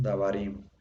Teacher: siempre debemos acentuar la última sílaba, ¿no? Como si fuera una palabra aguda en español. Entonces aquí bar sería la palabra que tiene acento, dabar.